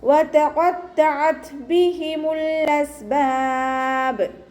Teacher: ത സുക്കൂനാവുന്ന സമയത്ത് കുറച്ച് എയർ പുറത്തോട്ട് പാസ് ചെയ്യണ സൗണ്ട് കൊടുക്കുക കേട്ടോ.